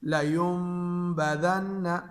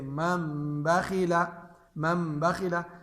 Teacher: اب نون ساکن کے بعد با آتی ہے تو نون کو ہم میم سے بدل دیں گے اور اس کو غنہ کے ساتھ پڑھیں گے، لیمبذن۔ یا دو کلمے میں ہو، جیسے من بخل، من بخل۔ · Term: اقلاب